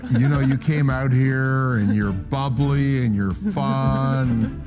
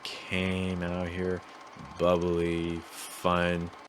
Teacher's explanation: you hear lots of repeated patterns right lots of rising intonations